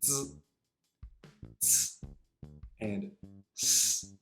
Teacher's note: The next two groups are called alveolar, meaning that they are articulated with the tongue against or close to the superior alveolar ridge, which really means the tip of your tongue goes right around where the top of your upper teeth meets the roof of your mouth.